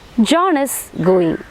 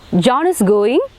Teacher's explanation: When the pitch rises and says, and when we say John is going, അവിടെ John is going എന്ന് പറഞ്ഞപ്പോൾ statement ആയിരുന്നു. John is going എന്ന് നമ്മൾ pitch ഒന്ന് ഉയർത്തി പറഞ്ഞപ്പോൾ അത് എന്തായി മാറി? ക്വസ്റ്റ്യൻ ആയിട്ട് മാറി.